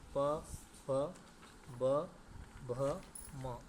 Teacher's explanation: तो प वर्ग का उच्चारण कहाँ होता है? तो ओंठ से होता है, ओष्ठ है।